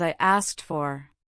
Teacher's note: It often comes out as I asked for. The ed in asked changes from a D sound to a T sound because of the following F. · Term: assimilation